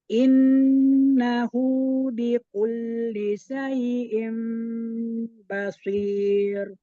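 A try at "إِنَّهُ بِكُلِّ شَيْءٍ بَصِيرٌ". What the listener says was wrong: Lagi S biasa.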